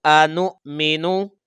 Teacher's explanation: یہ نون کو بیٹا جب ہم حمزہ ساکن کے ساتھ ملائیں گے تو جھٹکا لگے گا، ٹھیک ہے، اور نیچے جو واو ہے وہ ہم نہیں پڑھیں گے۔